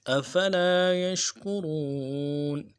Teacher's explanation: کاف کے پیش میں ہونٹوں گول کریں گے، رو میں واو مدہ ہے · یش میں یا کو شین کے ساتھ ملانا ہے اور تفشی ہے، واضح کریں گے